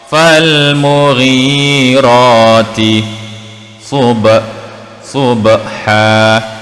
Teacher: Sub, sad depan su. Kita tebalkan sebutan pada huruf sad, bukan huruf sin. Jika kita membaca fal mughirati subha, sub, jika bunyi sub itu seakan-akan bunyi huruf sin, maka telah tertukar di antara huruf sad dan huruf sin.